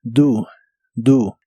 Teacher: La O de esta palabra se pronuncia como U